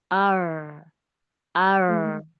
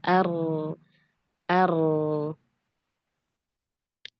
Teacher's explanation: Kalau ro arab dia getaran di awal. Kemudian setelahnya itu lembut. Jadi hanya satu getaran saja.